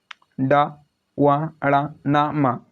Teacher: इनका उच्चारण स्थल नाक है